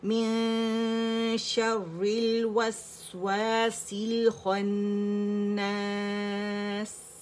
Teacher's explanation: آپ دیکھیں میم کے نیچے کسرہ، میم کسرہ می ہے، نون کی شین کی وجہ سے ہم نے نون چھپانا ہے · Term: اخفا